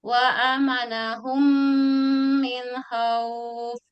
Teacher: Maka cara membacanya memasukkan huruf mim ke dalam huruf mim kedua disertai gunnah. Kira-kira 2 harokat. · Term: idgham mutamasilain